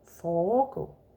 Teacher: Foregå is with an E in the middle. Yeah, that's why the first syllable becomes long. Foregå. And then forgå, there is no E.